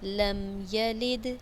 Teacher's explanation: لم میم پر غنہ نہیں ہوگا، یلد دال پہ آواز میں حرکت ہوگی۔